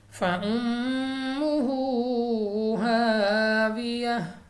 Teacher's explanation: میم مشدد غنہ کر کے پڑھیں گے، الف سے پہلے زبر الف مدہ کھینچ کر پڑھیں گے، اور تا کو گول ہاں سے تبدیل کر دیں گے۔